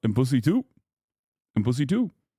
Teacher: A little bit more vocal fry on the and pussy too